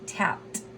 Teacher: notice how that ed sounds like a T